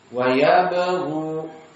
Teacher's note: Hukum tajwid mad asli. Yabghu, maka ada dua harokat.